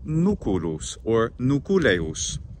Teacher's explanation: a kind of syncopation or the dropping of the vowel in between the c and the l